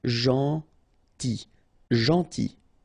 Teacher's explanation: it's a strange one because here this final L is not pronounced.